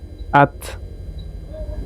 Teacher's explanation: Jadi kayak ada angin gitu. Ta ketika dia sukun at ada angin ikut dikit